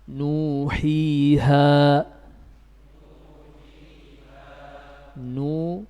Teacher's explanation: Duanya dihitung bukan pada wawunya, tapi dihitung dari nunnya. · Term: Mad tabi'i